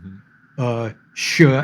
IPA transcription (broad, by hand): ʃ